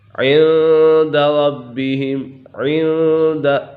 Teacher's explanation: یہاں دال حروف اکفا میں سے ہے تو اسی وجہ سے یہاں اکفا ہوگا، یعنی غنہ کر کے پڑھیں گے